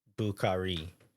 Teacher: I believe the correct answer is putting equal emphasis on all syllables.